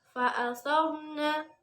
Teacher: ro' tafkhim, di mana ro' dibaca tebal